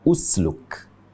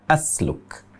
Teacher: sebenarnya yang tepat Dibaca usluk tapi di sini malah dibaca asluk mengubah harakat hamzatul wasl dari bunyi U menjadi Bunyi a